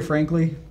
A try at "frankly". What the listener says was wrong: You're so close. It's right here. It's very open right now, and just needs to go back into a little bit of a rasp.